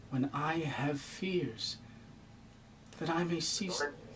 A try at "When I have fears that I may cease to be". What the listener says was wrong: But don't stress fears.